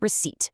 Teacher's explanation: receipt, where the P vanishes